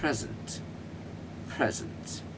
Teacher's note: Pre उठेगा और zen बैठेगा.